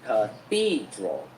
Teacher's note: Ba âm tiết nha. Three syllables. And the stress is on number 2.